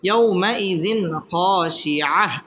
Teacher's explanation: খ আসছে খ ইজহারের হরফ এখানে গুন্নাহ ছাড়া স্পষ্ট করে পড়তে হবে